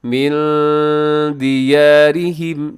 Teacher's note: नून साकिन के बाद दाल, तो यहाँ पर इख्फा कीजिएगा, आवाज़ को नाक में छुपाइएगा